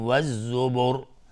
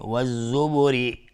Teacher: را مفخم میشه چون ساکنش کردیم قبلش ضمه داره. بخوایم عبور بکنیم و الزبر را ترقیق میشه چون کسره داره